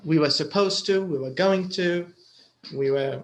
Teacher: I'm sure you noticed that was and were are unstressed. So you'll hear them very quickly.